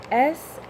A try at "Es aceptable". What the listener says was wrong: Yes, but I want to hear the ending.